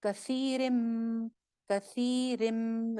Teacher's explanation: या रॉ मीम लाम वाव नून, जैसे कि हमने पढ़ा था इदगाम में क्या होता है, पिछले लेटर को अगले लेटर के साथ मर्ज कर दिया जाता है। नून की आवाज यहाँ बिल्कुल खत्म हो जाएगी, कसीरिन से हो गया कसीरिम